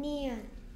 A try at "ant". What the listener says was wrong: 느라고 하면 니은이라고 하지 않아요. 티는 항상 트 그래서 합쳐서 그래서 소리